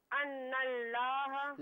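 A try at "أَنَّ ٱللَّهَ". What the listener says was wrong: लाम को पुर करके पढ़ें। अन्नल्लाह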